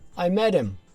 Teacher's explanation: I missed the 'h' sound completely. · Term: the disappearing 'h'